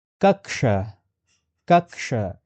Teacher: The first combined consonant of Sanskrit is Halanta ka plus retroflex sh, which forms ksha